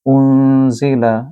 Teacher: یہاں نون ساکن ہے، نون ساکن کے بعد کیونکہ زا ہے اور زا 15 حروف اخفا میں سے ہے، لہٰذا نون کو آپ غنہ کے ساتھ پڑھیں گے